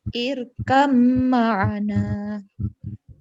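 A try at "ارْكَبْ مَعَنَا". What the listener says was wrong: nah, hati-hati dengungnya kurang lama. Irkam ma'ana. Waqafnya terputus. Irkam ma'ana.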